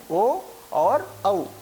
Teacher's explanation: कंठ और ओष्ठ के माध्यम से जिन स्वरों का उच्चारण किया जाता है वे हैं ओ और औ। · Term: कंठोष्ठम